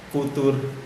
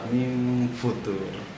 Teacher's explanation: Ketika mim itu udah mau ke fa-nya gitu. Ketika fu baru langsung nempel tuh ujung gigi atas ke bibir bawah.